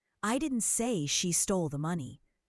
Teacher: Emphasizing she suggests someone else stole it.